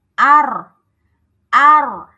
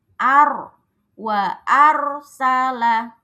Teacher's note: maka r-nya ini harus dibaca tebal. Ar wa arsala.